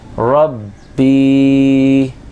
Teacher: با یا زیر بی، یا ساکن ہے اس کے اوپر جزم لگی ہوئی ہے، اور یا ساکن سے پہلے والے حرف کے نیچے زیر ہو تو یا کو مدہ ہو جاتا ہے، تو اس کو ایک الف کے برابر کھینچ کر پڑھیں گے